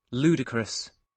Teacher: If they are unable to read the phonemic transcript, although I do tend to remind them that this little apostrophe means that the first syllable will be stressed, and then this is the long U sound, and then the schwa sound, which appears twice.